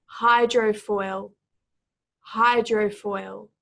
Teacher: here hydrofoil hydrofoil this is a very interesting word in that the emphasis is both on the first and the final syllable